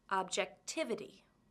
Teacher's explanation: which syllable has the stress objectivity it's the third syllable